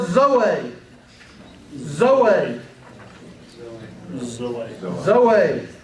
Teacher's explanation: the emphasis is on the last syllable